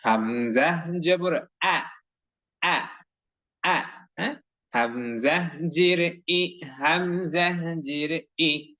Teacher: হামজা অক্ষর মুখ খুলে আওয়াজ করে সুন্দর করে জোরে স্বরে ধমকের স্বরে শক্ত করে হলকের প্রথম থেকে উচ্চারণ করতে হয়